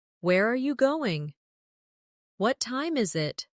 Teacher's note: for information questions, those starting with who, what, when, where, why, how, the tone often falls at the end. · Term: falling tone